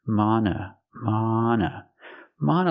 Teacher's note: the second vowel is a short uh sound like cup and up